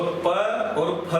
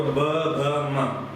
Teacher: तो प और फ तो अघोष, पहली दूसरी, और ब भ म तीनों घोष।